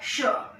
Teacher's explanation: इस श को बोलने के लिए हमें अपनी जीभ को अपने ऊपर के तालू तक ले जाना पड़ता है,